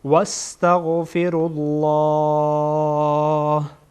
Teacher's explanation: رالله نمیگیم رالله، اشتباهه. رالله لام جلاله پر خوانده میشه